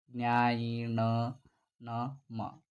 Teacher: ಮೂಗಿನ ಸಹಾಯದಿಂದ ಅಥವಾ ನಾಸಿಕದ ಸಹಾಯದಿಂದ ಉಚ್ಚರಿಸಲಾಗ್ತಕ್ಕಂತಹ ಅಕ್ಷರಗಳು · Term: ಅನುನಾಸಿಕ ಅಕ್ಷರಗಳು